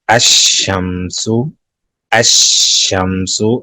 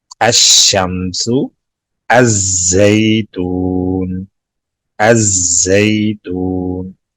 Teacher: لام کی آواز نہیں آئے گی، لام کا ادغام ہو گیا